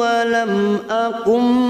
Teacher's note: nun sukun bertemu ba, namanya bacaan iklab. Kita masuk pada huruf ba, kita tahan selama 3 harokat.